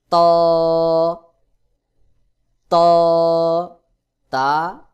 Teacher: জিহ্বার আগা সামনের উপরের দুই দাঁতের গোড়ার সঙ্গে লাগাইয়া ত উচ্চারণ হবে ত উচ্চারণের ক্ষেত্রে একটু চাপ দিয়ে শক্ত করে উচ্চারণ করতে হবে